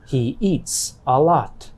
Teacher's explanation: the verb eat ends in a t sound a voiceless sound so the s at the end of the verb sounds like a s